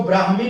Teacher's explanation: आगे देख लेते हैं, इसको ब्राह्मी पढ़ेंगे, ब्राह्मी नहीं। आधा म नहीं, आधा ह बीच में आ रहा है।